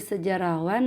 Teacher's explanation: penghilangan atau pelesapan R kemudian kata sejarah ditambah sufikan menjadi sejarahwan nah di jadi penghilangan atau pelesapan fonem H · dalam proses pengimbuhan akhiran wan pada dasar sejarah, maka fonem H pada dasar sejarah itu dilepaskan